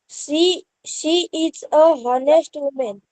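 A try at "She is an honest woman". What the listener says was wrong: क्योंकि आपने एच को प्रोनाउंस किया। इस शब्द में एच साइलेंट है, एच की आवाज नहीं आती। ऑनेस्ट, इसकी प्रोनाउंसिएशन ऑनेस्ट है। अगर आप उसको ऑनेस्ट बोलेंगे तो आप देखोगे कि ओ का साउंड आ रहा है, ओ का साउंड आ रहा है तो एन आएगा, अ नहीं आएगा।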